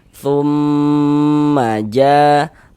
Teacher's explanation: kita gunnahkan, sehingganya bagian thum, nah, suaranya kita tahan, kita panjangkan sejenak. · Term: gunnah musyaddadah